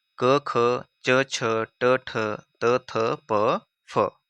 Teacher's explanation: लेकिन जो पहले 2 होते हैं वर्ग के, वो होते हैं आपके अघोष।